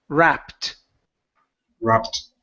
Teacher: it ends with the p sound the Ed sounds like a t